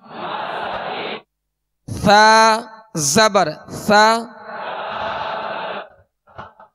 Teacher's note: سا کو نرمی سے پڑھیں گے، اس میں سیٹی کی آواز بالکل پیدا نہ ہو، نرمی سے ادا کریں گے۔